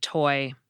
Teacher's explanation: After you touch your tongue to the roof of your mouth just behind your front teeth, and then let it down, you get a little puff of air before the vowel sound comes in. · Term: aspirated T